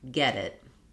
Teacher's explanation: That T turns into a flap sound. And it's just the same as when I'm saying D's in the middle of words